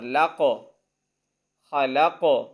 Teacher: اب قاف پر کلکلہ کریں گے یعنی آواز کو ہلائیں گے